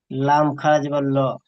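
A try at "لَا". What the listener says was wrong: টান দিবেন তো, টান কোথা হচ্ছে? লাম খাড়া জবর তো টান হবে।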